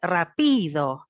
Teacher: está colocando la variación del tono en la segunda sílaba y no solamente eso sino que le está dando más volumen y más duración a la sílaba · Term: acento tonal